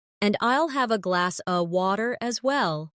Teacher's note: In connected speech, glass of sounds like glass a.